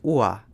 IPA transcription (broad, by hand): uɐ̯